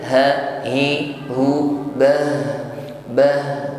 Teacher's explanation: Rahmatih, ditutup pada huruf ha, maka nampakkan sifat huruf ha yaitu hams rakhawah. Ada nafas mengalir, bunyi hurufnya juga mengalir.